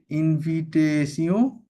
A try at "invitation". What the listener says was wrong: ইন তো বলা যাবে না ফরাসিতে। আইন কি ইন বলা যাবে না তো। বলতে হবে।